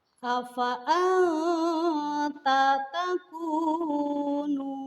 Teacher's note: Yang pertama ada contoh afa'anta takunu. Di sana terdapat nun sukun menghadapi ta. Maka nun sukun tersebut harus dibaca samar-samar. Tidak boleh dibaca jelas karena hukum bacaannya adalah ikhfa.